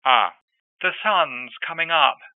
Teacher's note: in old-fashioned RP, a more open back sound is sometimes observed.